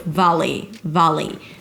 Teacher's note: The first syllable is the /a/ as in cat, don't swallow it.